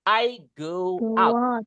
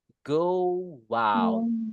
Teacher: Go w out. Ada tambahan suara W-nya.